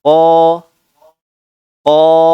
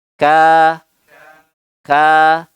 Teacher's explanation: huruf qaf dia berbeda, dia tidak terangkat sampai ke ujung lidah, bagian lidahnya, tapi hanya di pangkal lidah saja.